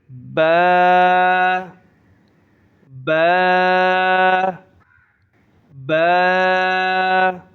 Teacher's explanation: نرمی کے ساتھ دونوں ہونٹوں کو آپس میں ملائیں گے، نرمی کے ساتھ نکالیں گے